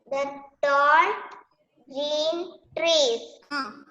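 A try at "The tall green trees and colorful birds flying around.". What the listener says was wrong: That is not a full stop. Don't pause there.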